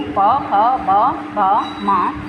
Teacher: ओष्ठ जिनका उच्चारण दोनों ओठों की सहायता से होता है